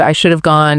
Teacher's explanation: could have, would have, should have often get smooshed down. And the have sounds very much like of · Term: contractions